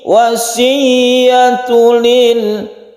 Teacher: Hati-hati di tasydid ya. Tasydid ya itu kita tabrakkan ke ya-nya, kita tekan ke huruf ya.